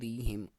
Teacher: را کے نیچے زیر ہے، باریک پڑھیں گے